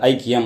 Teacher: குறைஞ்சிரும் சரிங்களா ஐனு முழுமையா நம்ம உச்சரிப்பதில்லை ஐக்கியம் அப்படின்னு சொல்லிட்டு போயிடுறோம் சரிங்களா ஐ அப்படிங்கறத விட ஆ அப்படிங்கிற மாதிரி வந்துருது · அதே மாதிரி மொழிக்கு முதலில் வருகிறது, அரை மாத்திரை குறைஞ்சிரும், 1.5 மாத்திரை அளவு ஒலிக்கும், ஐயா. அடுத்தது ஐக்கியம், இதில் இருக்கக்கூடிய ஐ 1.5 மாத்திரை அளவு ஒலிக்கும், அரை மாத்திரை குறைஞ்சிரும் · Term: ஐகாரக் குறுக்கம், ஐகார குறுக்கம்